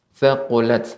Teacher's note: ta yang ketika sukun maka tetap harus sifatnya adalah hams, adanya aliran udara yang tersisa